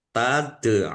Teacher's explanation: dal sukun bacaan qalqalah dibaca memantul ditampakkan pantulannya. · dal sukun, bacaan kolkolah, dibaca memantul, ditampakkan pantulannya. Ain domah wawu sukun, mat tobi'i, tetapi karena di akhir kata, atau karena bertemu dengan huruf terakhir yang dibaca sukun karena wakof, maka menjadi mat arid lis sukun.